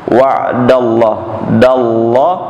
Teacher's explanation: lafaz Allah dibaca tebal tebal Kenapa Pak dibaca tebal karena lafaz Allah didahulukan fathah fathahnya yang mana Dal yang di atas huruf Dal ya selalu